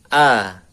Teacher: Nah, kemudian sini ada keterangan ini untuk hamzah pangkal tenggorokan. Makhrajnya hamzah di tenggorokan bawah. Dibuka mulutnya